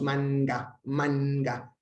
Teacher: la lengua se levanta hacia el velo del paladar